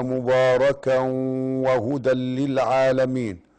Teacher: إدغام بغنة. لماذا؟ لأنه تنوين وجاء بعد الواو والواو من حروف ينمو